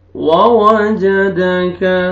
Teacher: वाव पढ़ेंगे, लिप्स को राउंड में लेके जाएंगे